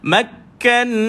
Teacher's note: Ada sabdu pada ka, tahan dan lepaskan ka. Nun ada sabdu wajibal gunnah tuan-puan. Tekan dan lepaskan nun.